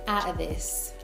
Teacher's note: You'll also notice the glottal T, especially when she says out of this.